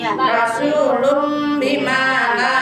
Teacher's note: Tanwin ketemu ba. Tanwin ketemu dengan ba, dibacanya suara mim.